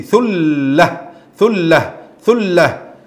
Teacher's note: if you'd like to stop ثلة ثلة why because التاء المربوطة when we stop on التاء المربوطة we will change it to ها